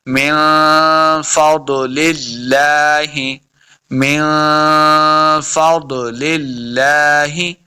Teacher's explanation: ہا کو پڑھنے کا طریقہ یہ ہے کہ ہا کو اپنے حلق کے نچلے والے حصے سے ادا کریں گے